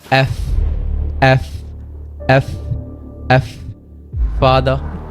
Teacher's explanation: উপরের দাঁত এবং নিচের ঠোঁট।